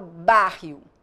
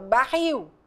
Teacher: e Que diferença é essa quando elas são oxítonas Ou seja a última sílaba que eu pronuncio eu pronuncio de forma mais forte enfática intensa